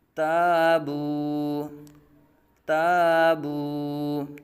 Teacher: تا باریک حرف ہے، الف سے پہلے باریک حرف آ گیا تو الف کو باریک